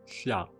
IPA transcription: ɬa